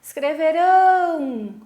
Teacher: A última sílaba é que foi a sílaba tônica, a sílaba mais forte. Portanto, escreverão é uma palavra oxítona.